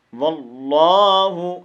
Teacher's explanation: ان ربک یعلم انک تقوم ادنی من ثلثی اللیل ونصفه وثلثه وطائفة من الذین معک واللہ یقدر اللیل والنہار. واللہ، لفظ اللہ کو پور پڑھیں گے. واللہ، اس ہا کو لمبا نہیں کرنا